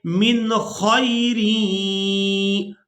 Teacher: نون ساکن پر اخفا نہیں کریں گے بلکہ اظہار کریں گے، یعنی نون ساکن کی آواز کو ظاہر کر کے ادا کریں گے